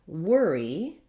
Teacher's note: in the word worry the letters o r say the tense stressed er sound it's actually just the same as in the word were